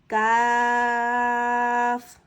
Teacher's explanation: کاف کو زبان کی جڑ اور تالو کے سخت حصے سے ادا کریں گے